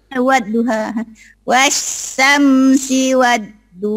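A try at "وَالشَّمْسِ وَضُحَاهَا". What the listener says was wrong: Jangan, ini tak ada tasdid, gak ada sabdu. Gitu, gak ada sabdu, gak ada sabdu. Hanya pertama kecil, ha kedua gede. Wasyamsi wadduhaha. Wasyamsi wadduhaha. Ha kecil sama ha gedenya masih belum jelas. Wadduhaha.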